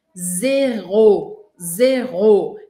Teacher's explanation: a gente tem o r característico da língua francesa bem no meio aqui